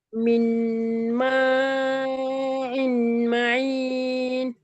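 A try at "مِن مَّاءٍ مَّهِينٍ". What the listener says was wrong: ஐ அல்ல இ இ இ சவுண்ட் வரணும். ம இன் மஹீன். மயின் அல்ல மஹீன்.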